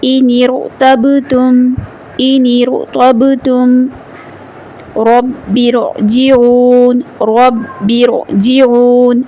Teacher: دونوں صورت میں ہم نے را کو پر پڑھا اس لیے کہ را ساکن سے جو پہلے زیر آ رہی ہے وہ دوسرے کلمے کا حصہ ہے